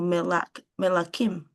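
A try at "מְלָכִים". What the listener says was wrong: Yeah. Melakim. Very good.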